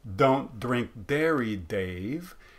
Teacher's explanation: don't tend to use that but then we can also get laminal which means using the blade of the tongue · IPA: t̻